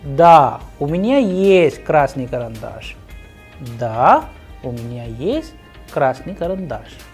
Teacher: we'll have a pause and complete the answer in a flat sound